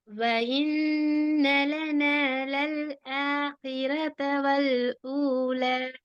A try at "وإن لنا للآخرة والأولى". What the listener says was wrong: وإن வாவையும் ஏன் பிரிக்கணும்? وإن என்று சொன்னா وإن என்று சொல்லி யாக பிரித்திரும், கவனம். وإن لنا وإ وإن لنا للآخرة والأولى.